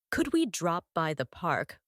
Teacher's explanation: could we drop by the park with stress on by